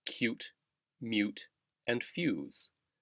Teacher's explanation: English also has the Y sound after a consonant, for example, cute, mute, and fuse. The Y sound does not appear in the English spelling, but you can hear it between the first consonant and the vowel oo.